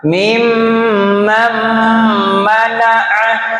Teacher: Dengungnya lewat hidung karena mim itu memang huruf-huruf hidung